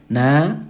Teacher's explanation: Nah, di sini kan ada mad thabi'i lagi karena baris atas yang diikuti dengan alif. Na, panjangkan dua ketukan mad thobi'i